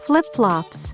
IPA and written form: flɪp-flɑps (Flip-flops)